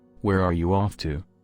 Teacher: Now please notice the falling tone of voice since this is an information question, not a yes or no question.